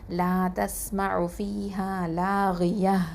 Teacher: தா மர்பூத்தல ஃபத்ஹத்தைன் வந்து ஹ சுகுனா மாற்றி நிப்பாட்டுவோம்